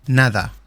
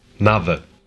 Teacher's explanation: European Portuguese has the soft D sound, while some Brazilian accents don't.